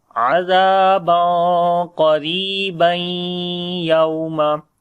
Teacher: Qaf we read in heavy sound, ra we read in light sound, and also we long due to ya madda. And after the tanween, which is on the ba, we connect with the ya because of idgham. It is idgham with gunna. · We make again ikhfa here, the hiding sound of noon, but we make the heavy ikhfa here, because after the tanween the next letter is qaf, which is the heavy letter, so we make heavy ikhfa here.